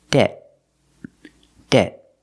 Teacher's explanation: We don't say debt. Usually we don't release the T at the end. You hear debt. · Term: stop T